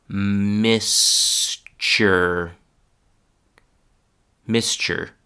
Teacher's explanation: t and u disappearing and being replaced by a ch sound